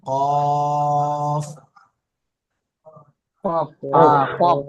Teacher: কফের উপর দু নক্তা, কফকে মুখ গোল করে পড়তে হবে, কফকে 3 আলিফ পরিমাণ টান দিতে হবে।